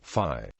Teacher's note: there is a tendency for Theta to undergo fronting and become F